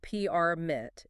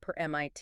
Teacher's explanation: if I stress the second syllable permit, it becomes an active verb. · If I emphasize the first syllable permit, it's a noun. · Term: word stress